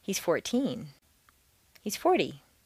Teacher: teen can be thought of as a separate word in terms of intonation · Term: compound intonation of numbers